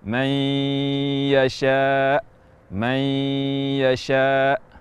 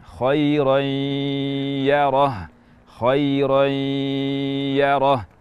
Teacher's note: kita idghamkan ke huruf ya ataupun waw, namun masih ada sifat gunnah yang merupakan milik nun mati atau tanwin yang masih menyertai idgham tersebut. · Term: idgham naqis